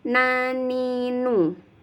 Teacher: ini termasuk huruf lisan atau huruf lidah dimana ujung lidahnya bertemu dengan gusi dua gigi seri tapi lebih ke bawah sedikit daripada makhroj huruf lam keep masih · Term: huruf na